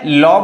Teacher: ठीक है, अब जो है ल बोल के देखिए, जीभ जो है दांत में आके टकरा रहा है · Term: दंत वर्ण